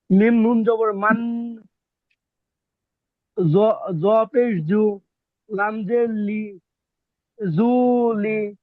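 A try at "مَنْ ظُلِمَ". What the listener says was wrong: জু টান হচ্ছে কেন, জবে জু, হরকত, হরকত হচ্ছেন তাড়াতাড়ি ভাই, জু। আচ্ছা, মিম নুন জবর মান, এই যে নুন সাকিন না, মিমের পরে কি নুন, এটা নুন সাকিন না ভাই।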